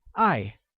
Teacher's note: To love or love translates as 爱, which is pronounced using a falling tone, like 爱. Good!